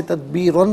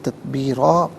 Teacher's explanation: اسے تدبیرن پڑھیں گے، وقف کی صورت میں تدبیرا پڑھا جائے گا، کیونکہ دو زبر کی تنوین وقف میں الف سے چینج ہو جاتی ہے